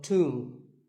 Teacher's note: the B is silent and the O is pronounced with an oo sound. So tomb.